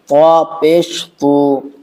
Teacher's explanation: تا نہیں طا موٹا پڑھیں گے